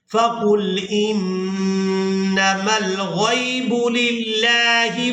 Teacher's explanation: नून मुशद्दद हो और मीम मुशद्दद, इन दोनों पर हमेशा ही गुन्ना किया जाता है, यानी आवाज को नाक में छुपा कर अदा किया जाता है।